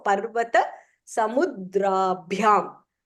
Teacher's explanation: The dra is not Mahapranah.